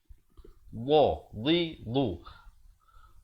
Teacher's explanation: Makhrajnya di tepi lidah. Tepi lidah kita ini kanan atau kiri bawa. Kalau kanan bawa ke kanan, kiri bawa ke kiri.